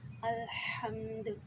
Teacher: وقف کی صورت میں یہاں ساکن ہو گیا دال تو کلکلا ہو رہا ہے